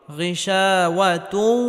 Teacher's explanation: তানবিনকে ওয়াওয়ের সাথে গুন্নাহের সাথে মিলিয়ে পড়তে হবে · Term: ইদগামে বাগুন্নাহ